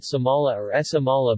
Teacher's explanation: This word has an S with a puff of air after it, not a sh sound. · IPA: Sʰamala